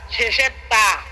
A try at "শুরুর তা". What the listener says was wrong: শেষের তা বিললে শুনছেন? শুরুর তা,